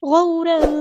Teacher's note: تنوین کے بعد فا ہے تو یہاں پہ اخفا ہوگا، تنوین کی آواز کو چھپا دینا.